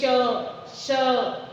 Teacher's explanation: फेफड़ों से वायु जब आपस में रगड़ करके बाहर निकलती है तो वो गरम गरम, आप अगर हाथ रख के और बोलेंगे श श, तो आपको गरम गरम महसूस होगा। वायु रगड़ से बाहर निकल रही है, ऊष्मा उत्पन्न कर रही है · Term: ऊष्म व्यंजन